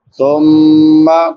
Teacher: ثم، سا نرم حروف میں سے ہے، 3 حروف جو نرمی سے ادا ہوتے ہیں، سا ذال ضا، تو اس کو نرمی سے پڑھیں گے اور میم مشدد پہ غنہ ہوگا۔